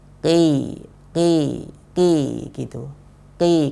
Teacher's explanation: Mungkin saran yang bisa Anda sampaikan yaitu dikebelakangkan lagi sedikit ya, lafadznya dibelakangkan lagi sedikit ya. Belakang lidah ketemu dengan langit-langit lunak atau langit-langit paling belakang. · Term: huruf qaf